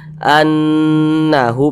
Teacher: di bagian annya itu kita tahan kita panjangkan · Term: gunah musyaddadah